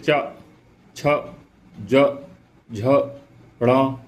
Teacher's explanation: इनमें सब में तालु से हमारी जीभ टकरा रही है, इनमें सब में हमारी जीभ किससे टकरा रही है, तालु से टकरा रही है। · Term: तालव्य